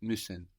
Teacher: the U with the two dots on the top, giving it that E quality